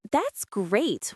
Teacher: With rising enthusiastic intonation sounds genuinely excited.